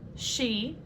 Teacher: this is the unvoiced sh sound as in she